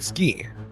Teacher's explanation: The ooh sound in suki is often muted, so it sounds more like ski.